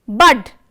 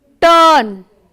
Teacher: Bud comes with a small sound, turn, a bit longer sound. So, the difference is nothing but a sound of one syllable or sound of two syllables are present here.